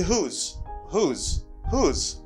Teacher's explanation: Do not pronounce W. You have to pronounce H. You stress the H.